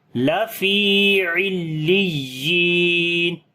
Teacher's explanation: باقی حروف کی نسبت یا کی آواز کو اونچا کر کے پڑھیں گے اور لمبا بھی کریں گے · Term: نبر